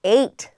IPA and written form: eɪt (ait)